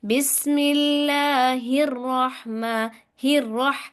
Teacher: हा को रॉ से मिलाते हुए झटका दे, शिद्दत इख्तियार करनी है, ठीक है, सख्ती से पढ़ना है।